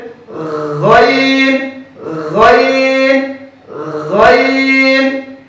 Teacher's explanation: গাইন হরফটি পড়ার সময় আওয়াজ মিডিয়াম হবে, মোটা হবে, উপরের দিকে দাবিত হবে, বাতাস বন্ধ, আওয়াজ চালু